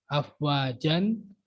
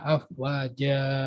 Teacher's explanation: Jadi dibaca panjang. Dan fathatnya hilang, jadi tinggal fathah doang. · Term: mada iwat